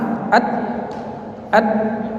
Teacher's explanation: Kemudian dari segi tertahan atau mengalirnya suara, ta itu tertahan, at tertahan. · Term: syiddah